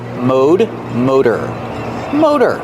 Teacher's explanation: in American English we pronounce it with the long o Mo the t is a fast D